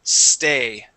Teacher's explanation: you had said stay, adding an e in front, saying stay. We want to remove that e and only say stay.